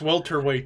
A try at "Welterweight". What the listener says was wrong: No, you said a Walter. You said a Walter.